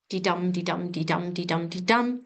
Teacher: 10 syllables in a line, and every second syllable is stressed. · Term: iambic pentameter